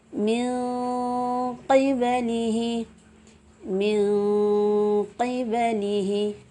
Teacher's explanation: Ada seperti kedengaran ming, karena penyebutan huruf nun dengan kaf maupun qaf itu letaknya berjauhan. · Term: ab'ad